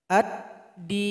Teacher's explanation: maka lemnya sudah bergabung kepada huruf Dal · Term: Idgham Syamsiah